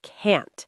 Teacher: When you're saying you can't do something, really emphasize that t sound. Can't. Make it strong and clear.